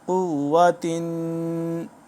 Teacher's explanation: قاف واو پیش قو، واو زبر وا، قوہ قوہ، تا دو زیر تین، قوتن قوتن، تنوین ہے، دو زیر ہیں تو یہاں پہ غنہ بھی کریں گے ہم